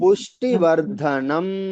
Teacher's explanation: ఉ అనేటప్పుడు కొంచెం ఆ అక్షరాన్ని లాగాలి వర్ధనం అని కొద్దిగా ఎక్కువసేపు రావాలి